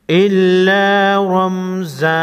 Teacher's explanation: را پر زبر ہے، را کو موٹا پڑھیں گے